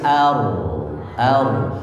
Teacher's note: Juga tidak boleh mencucu, ar, cukup seperti biasa, ar. Ketika ra tebal itu lidahnya ditegangkan, ya, pangkal lidah itu dinaikkan ke atas, supaya dia tebal